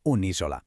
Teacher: El artículo femenino deja caer su A final, se le añade un apóstrofo y mágicamente se convierte en unisola.